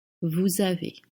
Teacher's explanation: You notice there is a Z at the end, you don't voice it.